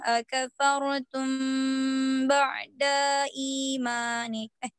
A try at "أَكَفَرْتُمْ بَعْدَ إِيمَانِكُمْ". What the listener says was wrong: Ba'da'i, langsung nggak boleh panjang dalnya.